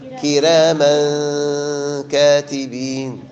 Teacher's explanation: ترقيق الراء ثم كراما إخفاء بغنى